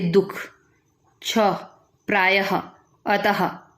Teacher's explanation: विसर्ग वह ध्वनि जो कुछ तत्सम शब्दों में स्वर के बाद ह के रूप में उच्चारित होती है